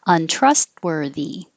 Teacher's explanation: I don't make the T in the middle, trust, but I do put my tongue in the T position and stop the airflow.